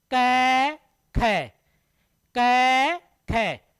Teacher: तो अन्न पूछ रहे अलप्राण कौन कौन से हैं, क ख। तो क में क्या निकल रही है, कम हवा। क में कम है, ख में क्या निकल रही है, अधिक। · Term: महाप्राण